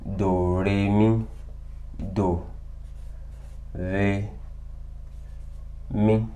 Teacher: the do is the low tone, re is the mid tone, and mi is the high tone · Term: three major tones